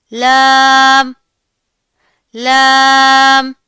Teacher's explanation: जुबान की नोक और जुबान की करवट का आधा हिस्सा जब ऊपर के दांतों के मसूड़ों से लगेगा तो लाम अदा होगा। इसकी दगी करते वक्त आवाज को नाक में नहीं लेकर जाना। · आवाज को नाक में नहीं लेकर जाना। यह बारीक पढ़ा जाएगा। मोटा नहीं करना इसको आपने।